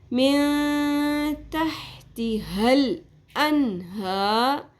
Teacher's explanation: ہا کے اوپر کھڑی زبر ہے، 1 الف کے برابر کھینچیں گے